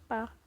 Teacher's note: ओठ, दोनों ओठ होते हैं वो आपस में टच करते हैं एक दूसरे को, इसलिए इसे ओष्ठ कहते हैं।